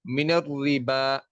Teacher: रा के नीचे जेर है, इसे बारीक करके पढ़ेंगे। और बा के ऊपर देखें खड़ी जबर है, और उसके बाद हमजा अगले लफ्ज का हिस्सा है, तो यहाँ पे भी मद्दे असली होगी।